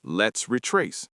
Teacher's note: Notice how the S at the end of let's blends smoothly into the R of retrace. You do not need a big pause between the words.